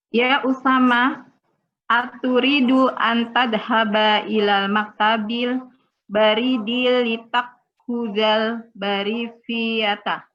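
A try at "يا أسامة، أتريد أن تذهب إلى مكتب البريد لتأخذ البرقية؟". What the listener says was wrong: Ya, litakhudal barqiyata. Ya, intonasinya pertanyaan, Bu.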